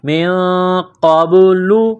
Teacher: کو با کے ساتھ ملانا ہے، قاف کو موٹا کرنا ہے، با ساکن ہے، حروف قلقلہ ہے، تو یہاں پر قلقلہ کریں گے